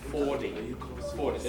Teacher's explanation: The t becomes a d, quite commonly. Or sort of half a d. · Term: voicing